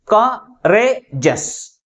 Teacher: That is second syllable pronounced with a greater force comparing with other syllables. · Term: primary stress